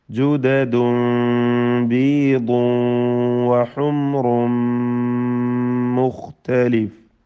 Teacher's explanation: ജുദദുൻ തൻവീൻ, ബീദുൻ തൻവീൻ, ഹുംറുൻ തൻവീൻ, എല്ലാം മണിക്കണം. ഇതിൽ ജുദദുൻ എന്നതിലെ തൻവീനിനെ ഇഖ്ലാബ് ചെയ്യണം, സാക്കിനായ മീമിൻ്റെ ശബ്ദം നൽകി മാറ്റി മണിക്കണം · എന്നാൽ ബീദുൻ ഈ തൻവീനിനെ ഇദ്ഗാം ബിഗുന്ന നാഖിസ് നൽകി വാവിൽ ഭാഗികമായി ലയിപ്പിച്ച് മണിക്കണം. ഹുംറുൻ ഈ തൻവീനിനെ പൂർണ്ണമായും മീമിൽ ലയിപ്പിച്ച് മണിക്കണം.